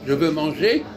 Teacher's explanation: quand on dit je veux manger on prononce pas le r